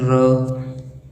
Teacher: लुंठित और प्रकंपित, जैसे हमारी जीवा होती है ना, जीवा मुर्दा के साथ लगती है, 2-3 बार उसके साथ टच करती है, वहाँ पर एक प्रकंपन पैदा होता है, उसी के आधार पर इसको प्रकंपित व्यंजन कहा जाता है।